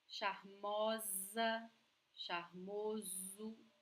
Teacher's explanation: And remember that S between vowels sounds like Z.